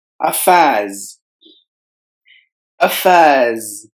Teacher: Just like the same way how you usually do, but silencing these highlighted letters. And you have to replace the S sound with the Z sound